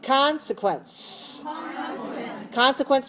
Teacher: three syllable stress the first one